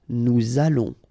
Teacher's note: O and together it's on, and then we'll make this little link between the two, what we call the liaison